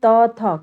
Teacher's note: त जीभ और दांत की सहायता से बोले जा रहे हैं, इसलिए दंत व्यंजन होंगे बच्चों, क्योंकि जीभ की नोक ऊपर दांतों को स्पर्श करती है इसको उच्चारण करते समय बच्चों।